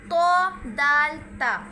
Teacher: जुबान की नोक और ऊपर के दांतों की जड़ से अदा होता है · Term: हरफे नुत इया